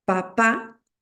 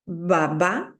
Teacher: cuando dicen bá sienten que vibra como un ronroneo baba Esa es la sonoridad de las de los pliegues vocales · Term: Sonoras